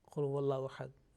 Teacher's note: this lam mushaddad will be always will be pronounced with the thick sound. You know the rule when we practice this lam mushaddad, this rule, especially keeping in mind Suratul Ikhlas, Qul huwallahu ahad, that one.